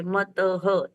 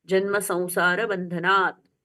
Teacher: मतः त पूर्ण हुआ, बंधनात् त हलंत वाला इसलिए आधा